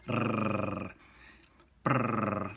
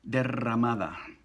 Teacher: a double vibration on the tongue, on the tip of the mouth. Brrr, brrr, like maybe a cat that's really purring it up. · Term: double R